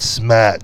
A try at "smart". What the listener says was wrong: It's not smat, it's smart. And you do say smart. It's wicked smart.